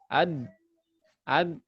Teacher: Oh, ujung lidah ketemu gigi seri atas.